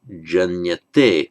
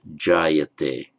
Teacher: But what happens, and it's a bit irregular, what happens is that the n drops out and the a is lengthened. And that is why it is jayate.